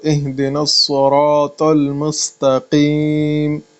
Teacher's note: میم کے بعد جو سین ہے اس کو باریک پڑھیں